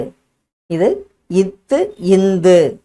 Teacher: நாவின் நுனி மேல்வாய் பல்லின் அடிப்பகுதியை பொருந்துவதால் பிறக்கும் எழுத்து